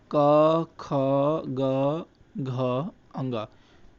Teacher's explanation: और इनके उच्चारण स्थान बताए थे कि क वर्ग का उच्चारण स्थान होता है कंठ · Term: कंठ ध्वनियां